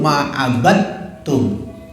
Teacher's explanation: Dalnya hilang, masuk ke ta, kan itu tuh idgham. Ingat idgham itu masuk bapak-bapak ya, masuknya huruf yang satu ke huruf yang lain.